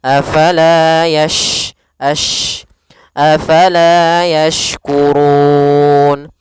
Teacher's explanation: kita keluarkan makhrajnya dari tengah lidah kita untuk huruf syin · Yash, kemudian di sini ada huruf shin, jangan dibaca yaskurun, nanti maknanya berubah. Dia kita keluarkan makhrajnya dari tengah lidah kita untuk huruf shin. Kemudian sifatnya adalah intisyarus shaut atau sifat tafasyi, yaitu mengalirnya mengalirnya suara di mulut lebih banyak.